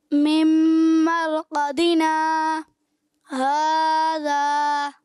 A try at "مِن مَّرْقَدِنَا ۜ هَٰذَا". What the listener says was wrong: ایسے لگتا ہے جیسے سانس لے لیتے ہیں.